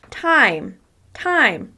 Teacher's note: I pronounce the word time by lengthening the vowel sound, making it louder, and also making it higher in pitch. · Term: stressed